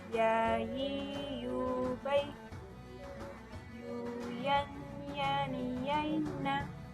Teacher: Huruf yang terakhir adalah huruf ya. Huruf ini keluar dari tengah lisan yang disentuhkan dengan langit-langit.